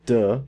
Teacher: for a du it's voiced it's in our oral Cav cavity when we make a duh we make it at our alveolar Ridge